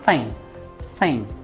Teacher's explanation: é como se fosse um n bem prolongado e um G bem Sutilmente pronunciado então fica Thing Thing a palavra something por exemplo contém a